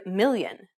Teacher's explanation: english l but instead of using the tip of the tongue try using the middle part of the tongue to approach the roof of your mouth you want the air to escape to the sides and around your tongue